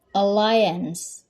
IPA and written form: əˈlaɪəns (Alliance)